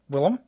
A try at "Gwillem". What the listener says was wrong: Gwillem with a G. Say the G. Hard G. Gwill.